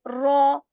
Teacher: Ra, this has this rolling sound in it. Ra, ruju, you are not supposed to over that rolling sound, but still it is there.